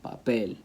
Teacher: Same thing with a word that ends in L, like papel. Papel ends with an L. Stress has to go on that last syllable